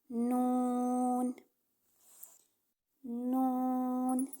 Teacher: जुबान का किनारा और दांतों की जड़ों से अदा होता है दांतों की जड़ों से यानी जहां से हमारे दांत निकल रहे · زبان کا کنارہ اور دانتوں کی جڑوں سے ادا ہوتا ہے، دانتوں کی جڑوں سے یعنی جہاں سے ہمارے دانت نکل رہے ہوتے ہیں۔